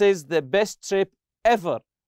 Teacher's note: So the intonation here, his sound will be rising up. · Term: rising intonation